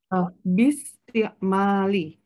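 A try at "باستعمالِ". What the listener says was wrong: Iya, oke, bagus. Lanjutkan.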